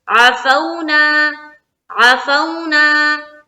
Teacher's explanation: تو ہم جب یہاں پر پڑھیں گے عفونا عفونا، کوئی اگر پڑھے عفونا عفونا غلط ہو جائے گا، تو فو کھینچنا نہیں ہے، جلد ادا کریں گے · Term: واو لین